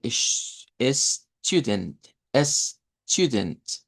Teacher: en primer lugar una U larga, esa U nos indica una U larga, y luego tendríamos la schwa en la posición de la I, de la E.